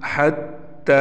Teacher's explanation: ता को हम एक अलिफ के बराबर खींच कर पढ़ेंगे।